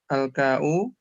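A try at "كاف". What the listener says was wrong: Ya, nama dia si kaf ya, bukan ka'u.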